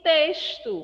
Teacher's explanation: esse meu x que aparece na palavra texto tem um som de s